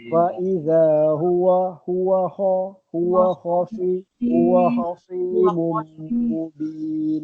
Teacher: Huruf kha tu sebab huruf halqum. Dia ke dalam.